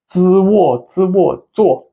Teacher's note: A single z don't need to roll your tongue.